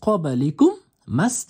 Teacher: Demak, umumiy holatda birinchi variant, yerda to'xtamoqchi bo'lsangiz, qobalikum manusiga sukun qo'yib to'xtaysiz va to'xtaganingizdan so'ng mana ikkinchi mani endi tashdidni olib tashlaysizda, oddiy m qilib o'qiysiz. M-a o'qilinadi. Tashdid ikkita m o'qilinmaydi.